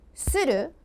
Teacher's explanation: If you say SUru with the falling intonation it means to pickpocket or to print something